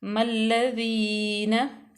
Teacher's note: उसके बाद अलिफ लाम तारीफ़ के बाद आ गया हरूफ जो है ना वो शमसिया, क्योंकि इसमें ज़ाहिर करके नहीं पढ़ा जाता, डायरेक्ट मीम को हम लाम में मिला देंगे